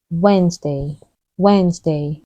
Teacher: say Wednesday the correct way to say it is Wednesday Wednesday the first D is silent